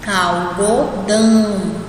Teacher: Você não sente o som saindo pelo nariz, mas quando você fala dão, você sente que sai um pouquinho pelo nariz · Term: som anasalado